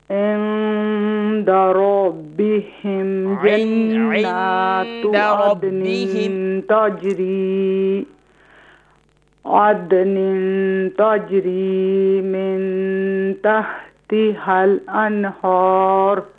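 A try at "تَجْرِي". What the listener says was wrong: تجری میں جو جیم ہے اور تا کو لائٹ کریں اور جیم کو بھی لائٹ کریں.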